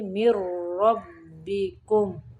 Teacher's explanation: قد جاءتکم بینۃ من ربکم، من ربکم نہیں پڑھیں گے، مر، میم کو را کے اندر ملائیں گے